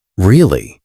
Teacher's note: with rising intonation means a question